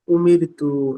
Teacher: এখন এখানে জজমের এজরাটা না করলে চলবে, এখন যে এজরাটা করতে হবে অবশ্যই, এ, র সাকিনের আগে জের এসছে, এই জন্য র কে বারিক করে পড়তে হবে